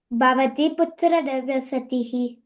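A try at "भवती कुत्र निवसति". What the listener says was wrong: నివసతి అంతే, విసర్గ లేదు అక్కడ.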